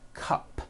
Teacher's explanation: It ends with an unvoiced P. P, p, cup. P, p.